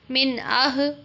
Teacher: الارض، میم نون زیر من، حمزہ ہا زبر آہ، من آہ۔ اب یہاں نون پر غنہ نہیں ہوگا کیونکہ آگے حمزہ آ رہا ہے۔